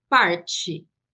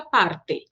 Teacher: em português, o E, nessa posição de final de palavra, ele se transforma no som do I.